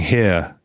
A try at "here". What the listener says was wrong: Here. you're saying hair.